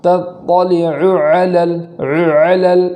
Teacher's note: دونوں عین ایک ساتھ ہے، تو اس کو بھی خوب واضح طور پر پڑھیں گے کہ دونوں میں کوئی تاخیر نہیں اور دونوں کو بالکل ملانا بھی نہیں ہے، اس طریقے سے پڑھیں گے تطلع علل اس طریقے سے بالکل واضح پڑھیں گے. · ایسا نہ ہو کہ پہلے والے عین حمزہ سے بدل جائے یا دوسرے والے عین حمزہ سے بدل جائے. دونوں کو خوب واضح پڑھنا ہے.